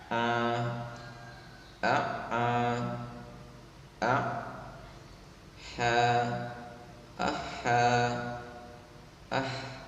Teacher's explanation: Wasatul halqi, tenggorokan tengah, yaitu huruf ain dan ha.